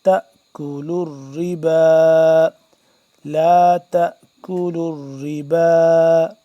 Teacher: کھڑا مد زبر با 2 سے 3 الف کے برابر یہ لمبا ہوگا مد. کھڑا زبر بھی ہے اور یہ بھی ہے, یعنی کہ کھڑا زبر 1 الف کے برابر لمبی ہوتی ہے اور یہ مد 2 سے 3 الف کے برابر.